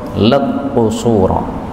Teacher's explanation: ini kaf ketemu qaf boleh idgham